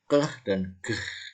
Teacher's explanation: Keh dan geh itu velum, jadi pakai langit-langit, ya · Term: velar